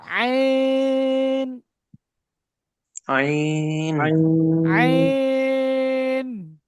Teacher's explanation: আইন গলার মধ্যখান থেকে